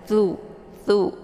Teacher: posisinya yaitu di ujung lidah dengan ujung gigi seri bagian atas tuh tuh ya jadi anginnya itu agak sedikit tertahan ya Hamas